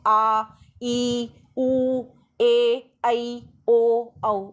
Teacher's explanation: जिन स्वरों के उच्चारण में ह्रस्व से दुगना समय लगता है ना, और ज़्यादा हवा मुँह से बाहर निकलती है, वो दीर्घ स्वर कहलाते हैं।